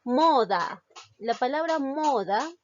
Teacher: su mayor fuerza de voz recae en la sílaba mo, es decir, en la penúltima sílaba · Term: palabra grave